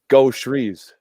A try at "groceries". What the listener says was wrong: Because technically there's not an SH there.